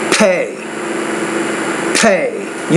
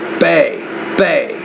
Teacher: you got to pronounce that P with more air.